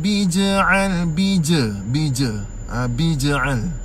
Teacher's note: jim itu qalqalah. Qalqalah yang kecil, tuan-puan sekalian, qalqalah sughra.